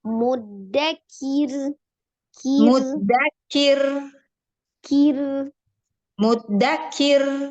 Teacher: kan hilang tuh kir hilang ya ahah jangan jangan langsung diilang angin tetap dia dialirkan hanya dibacanya tipis ya takrirnya sekali aja